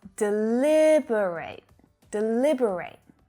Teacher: we've got four syllables the second is the strongest and the fourth is also strong